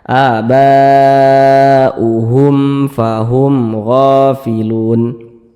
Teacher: Mad tabi'inya berjumpa dengan huruf hamzah tapi dia dalam satu kalimat, dalam satu kata, sehingga dia menjadi mad wajib muttasil, panjangnya juga 4 harokat atau 5 harokat.